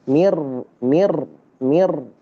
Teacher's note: itu karena salah karena tidak ditikrar, tidak digetar. Dia harus ada getarnya.